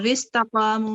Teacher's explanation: وستقاموا میں یہ وصل ہوگا وستقاموا. تو قا جو ہے یہ الف مدہ ہے، قاف جو ہے وہ تھک لیٹر ہے، مو جو ہے وہ واو مدہ ہے. 2 سیکنڈ اس کو لمبا کریں گے. یہ دونوں 2 سیکنڈ پڑھنے ہیں.